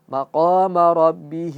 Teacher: Qanya panjang 2 harakat.